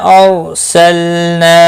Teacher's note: رو ساکن سے پہلے زبر ہے، پور پڑا جائے گا رو ساکن. لام ساکن کو ہلانا نہیں.